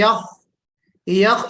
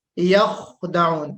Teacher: यख, यख यानी हम बिल्कुल थोड़ा सा पीछे का जो हिस्सा है ना उसको थोड़ा सा हम हरकत देंगे, वहां से निकालने की कोशिश करेंगे। यखदऊन, जो जुबान की जड़ है वो बुलंद होगी।